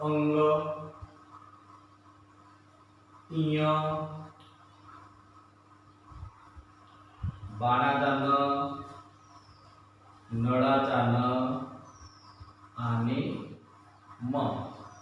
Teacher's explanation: अनुनासिके नासिका स्थानापासून उच्चार होणारे वर्ण